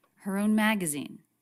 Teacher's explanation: She pronounces a light H sound, even though it's unstressed.